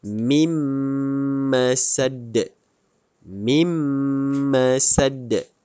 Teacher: nun ni dimasukkan dalam huruf mim dan didengungkan dua harakat. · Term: idgham ma'al ghunnah